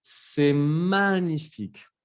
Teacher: la G con la N se pronuncia ñ, como si fuera la ñ